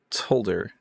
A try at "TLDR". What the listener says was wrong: The emphasis on the wrong syllable.